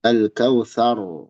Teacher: Toina ka al kautsar, ro tebal ya. Thar, ro tebal tapi sa jangan dipanjangkan